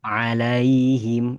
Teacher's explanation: kemudian him di pangkal tenggorokan aqsal halqi.